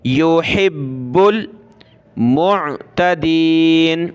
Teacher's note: یا پیش یو، ہا با زیر حبا، لام پیش بل، حبل، با کو سخت کریں گے تشدید کی وجہ سے اور با کو لام کے ساتھ ملائیں گے